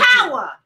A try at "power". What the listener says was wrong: Power. We don't see, don't say E-R. Power. Power. Power. P-O-W-A. Power. Like soul power.